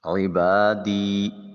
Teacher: عین کو وسط حلق سے ادا کریں گے۔ عبادی، با میں الف خالی از حرکت ما قبل با کے اوپر زبر ہے، ایک الف کے قائم مقام اس کو لمبا کریں گے، یا کو لام کے ساتھ ملائیں گے۔